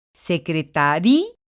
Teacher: tengo que romper el diptongo porque la pronunciación así me lo marca · hago fuerte a la vocal débil que en este caso es sí y entonces estoy rompiendo el diptongo lo que implica que la ya pertenece a una sola sílaba